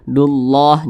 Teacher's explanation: Di belakang kalimat Allah ada huruf yang memiliki tanda baca dhammah gitu ya, atau fathah begitu. Maka kalimat Allah dibaca tebal, dibaca tafkhim. Jadi ini kita baca dullah, jangan dullah, tapi dullah seperti itu.